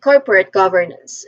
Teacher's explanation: The first syllable, core, it is pronounced with a short O sound. So this part receives primary stress. Second syllable, por, corpo, it is pronounced with a schwa sound, po, po.